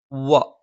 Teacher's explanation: രണ്ടു ചുണ്ടും വൃത്താകൃതിയിൽ വെച്ചുകൊണ്ടാണ്